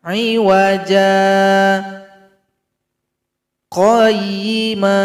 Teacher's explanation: Jim ini dipanjangkan 2 ketukan.